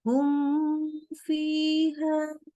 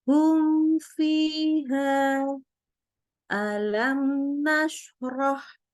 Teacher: Ingat sama ya seperti idhar halki yang nun sukun atau tanwin, ini juga sama idhar juga. Mimnya kita baca jelas ya, ada sifat tawasudnya jangan lupa, tanpa kita tambahin gunnah, jadi dipanjangkan gunnah nggak boleh.